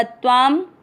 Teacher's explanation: शब्द पूरा होने के बाद अनुस्वार आधा म